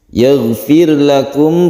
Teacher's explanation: roknya dibaca tarkik karena sebelumnya ada kasroh, maka rok dibaca tipis atau tarkik.